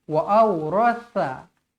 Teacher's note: sa nipis macam huruf zal juga lidah pastikan terkeluar sedikit